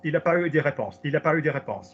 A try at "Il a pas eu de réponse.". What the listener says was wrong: Good. Good.